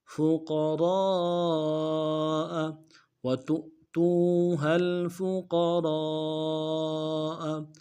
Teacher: قاف کو موٹا ادا کریں گے، را کو موٹا ادا کریں گے، را کے ساتھ الف مدہ ہے ، الف مدہ کے اوپر مد اصلی ہے، کم سے کم